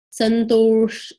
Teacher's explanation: This S is a retroflex S. It is not a regular sh sound. It's sh.